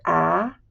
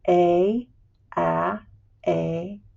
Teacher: So if you say the short sound here, a, and then say the long sound, a a, you'll feel the back of your tongue flatten out when you say the long sound. So the lax or short sound is a relaxed bottom pallet on your tongue.